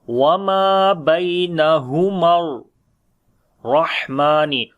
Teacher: Ra we read in heavy sound due to fatha sign on it. Ha we read from the middle of the throat, and also we continue our breath here in this letter · Ha we read from the bottom of the throat. Mim we connect with the ra with the strong voice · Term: hums quality